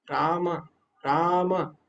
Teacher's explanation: तो जो भी पांचवे वर्ण है उसमें क्या ट्रिक है, आपको नाक का उसमें उपयोग करना होगा। तो राम जब हम बोल रहे हैं ना वास्तव में, तो राम उसमें नासिका भी लग रही है।